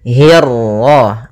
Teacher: Kemudian hi-nya tipis, kasrah bertemu ra yang tebal. Nah, di sini kita namakan dengan ra tafkhim.